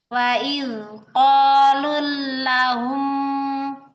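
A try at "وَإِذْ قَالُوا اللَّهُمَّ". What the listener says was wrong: Ini coba jangan lahum. Ya, karena kita kurang familiar ya kalau misalnya bentuknya tidak Allah gitu ya. Ya, ini juga sama lafaz Allah ya.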